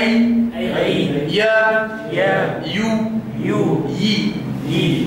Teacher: مخرج الياء غير الماديه من وسط اللسان مع وسط الحنك الاعلى